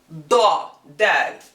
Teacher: For da is an emphatic consonant. It has a really fat, exaggerated sound.